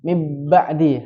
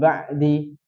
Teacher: Tapi cara membacanya kita bahas cara bacanya itu tidak boleh seperti ikhfa, tidak boleh seperti idgham. Kalau dia bacanya mingkem, dia dianggap idgham ke huruf bnya.